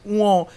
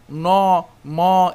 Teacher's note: বাকযন্ত্রের উচ্চারণ প্রক্রিয়া, হ্যাঁ, মানে কোন জায়গা থেকে উচ্চারিত হয়, যেমন উঁ, এটা যদি আমি বলি সেটা কিন্তু নাক দিয়ে বেরোচ্ছে, ঠিক আছে? ন, ম, এগুলো কিন্তু নাক দিয়ে বের হচ্ছে